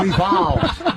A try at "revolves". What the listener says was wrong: You did, but without an R. The world evolves.